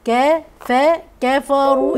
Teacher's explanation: الكاف والفاء مرقين والراء مفخمه